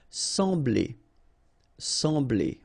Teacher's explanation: So EM will give you the sound en, okay? So you don't pronounce the M, you just get the sound en.